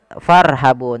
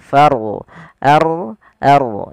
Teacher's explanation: Kemudian farhabun, ada huruf ro yang didahului oleh huruf dengan tanda diakritik fathah. Jadi huruf r dibaca dengan ro tafkhim, artinya kita harus menebalkan bunyi r, tafkhim. Eh, jangan dibaca farhabun, tapi lebih tepatnya far ard ard.